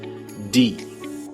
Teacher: in the English word the very tip of your tongue hits your alveolar Ridge that Ridge right behind your front upper teeth D but in Italian the tip of your tongue flattens out